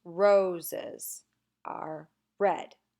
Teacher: the word roses is has two syllables and the first one is stressed